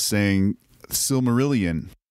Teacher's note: we pronounce it funny in English, we do what's called a schwa, which is sort of an extra vowel sound.